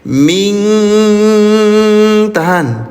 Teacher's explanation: Di sini ada hukum tajwid nun sukun bertemu dengan huruf kaf namanya ikhfa. Samarkan cara bacanya. Tahan, jangan tergesa-gesa.